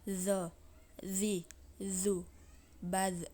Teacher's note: itu betul tamta ni that nah berikutnya adalah huruf dza yaitu mengangkat posisi pangkal lidah dan lidah bagian depan menutup bagian langit-langit